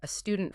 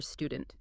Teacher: It's adding an extra vowel sound, usually at the beginning of words, starting with es plus a consonant. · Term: epenthesis